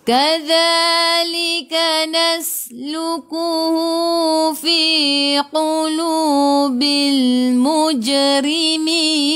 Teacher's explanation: Kadza di ujung lidah keluar pada gigi depan za 2 harakat, ada alif mad asli.